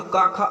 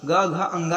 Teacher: जैसे का वर्ग में है तो का, ख अघोष होंगे, बाकी ग, घ, अंगा ये होंगे सघोष